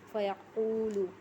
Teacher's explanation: واو مدہ کو ایک الف کے برابر کھینچ کے پڑھنا ہے